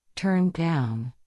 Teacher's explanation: The down is higher or let's say it's more stressed.